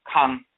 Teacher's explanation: the A in the term Ka, to speak, to pray, is nasalized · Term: nasalization